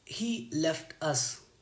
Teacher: Here left is a verb and a content word, so stress will be on left.